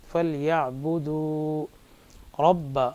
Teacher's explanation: را کو موٹا پڑھیں گے کیونکہ را پر زبر ہے